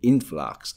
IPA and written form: ˋɪnflʌks (influx)